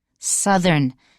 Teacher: when we have southern the oh you has like a short u sound and then our th we have to vibrate in our throat